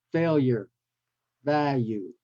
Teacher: the L doesn't have the typical l sound but it takes the Y sound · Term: the yeah sound